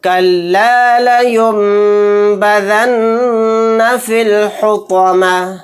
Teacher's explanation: नून साकिन के बाद बा आ गया, तो यहाँ पर भी हम गुन्ना करेंगे